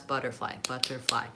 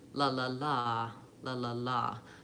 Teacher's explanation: And actually it'd be better to do it in a way where I could hold it out longer, like la la la, la la la. So the rhythm is short, short, long. The intonation for the word butterfly is that I tend to do a pitch change, butterfly.